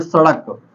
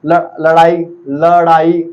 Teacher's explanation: हमारे जीभ झटके से ऊपर नीचे होती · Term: द्विगुण व्यंजन